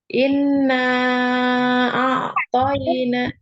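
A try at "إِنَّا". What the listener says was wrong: Dengungnya ditahan. In itu ditahan ya, panjang.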